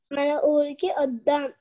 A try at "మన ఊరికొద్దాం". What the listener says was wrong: ఊరికి వద్దాం కాదు, కలిపి చెప్పు. మన ఊరికొద్దాం.